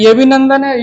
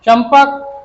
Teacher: नंदन में बिंदी ना हो गई और चंपक में माँ हो रही है।